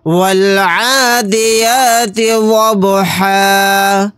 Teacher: با کے اوپر ساکن ہے، یعنی کہ با جو جزم لگا ہوا ہے، تو یہاں پر قلقلہ ہوگا، کیونکہ با حروف قلقلہ کے حروف میں سے ایک حرف ہے۔